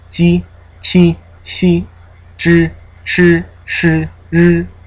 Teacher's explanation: Going from alveolo-palatal to kind of curling back into the retroflex.